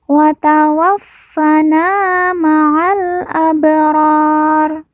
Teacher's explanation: Fa yang bertasdid kita baca ditekan dan ditahan dua harakat